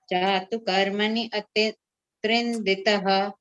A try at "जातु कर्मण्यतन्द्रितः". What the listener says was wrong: Don't say karmani and all. Just say jatu karmanyatandritah.